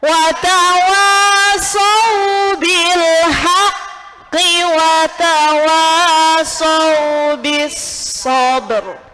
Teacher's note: Ada ro hidup sebelumnya huruf mati, harokatnya sebelumnya apa? Fathah. Maka tebal.